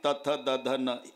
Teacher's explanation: जेव्हा संबंध दाताचा जिभेशी येतो ते दंत्य आहे